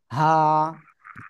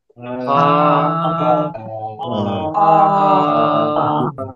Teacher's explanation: হলকের বা গলার শুরু থেকে এই অক্ষরটা উচ্চারণ হবে